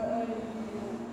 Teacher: nun mati jumpa dengan ya idgham bi gunnah